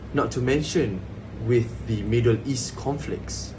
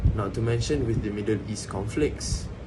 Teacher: Middle East and conflicts are stressed